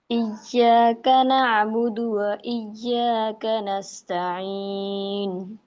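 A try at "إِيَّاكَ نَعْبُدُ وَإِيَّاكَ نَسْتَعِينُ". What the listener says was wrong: बेटा ना को ना आइन को आपके हमजा आ रहा है, ना अबुदु नहीं है, हल्क के बीच से आए, ना अबुदु, ना हमजा हो गया ना, आइन की आवाज निकालना है।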